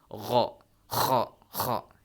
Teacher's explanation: dan gha dan kha itu di paling atas leher atau tenggorokan kita. Gha, kha, ya, seperti orang yang mau berdahak, kha.